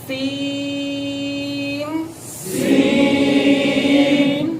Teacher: آواز ان کی ناک میں سین ایسے. تو ناک میں آواز نہیں جانی چاہیے سین کے اندر